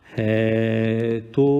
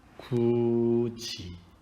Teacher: 받침의 디귿, 티읕이 이 모음을 만나면 지읒, 치읒으로 바뀐다